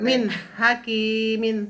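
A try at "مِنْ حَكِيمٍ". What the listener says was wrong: Nah, panjangan tapi kinya.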